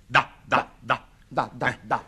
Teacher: si pronuncia battendo con la punta della lingua sui denti superiori.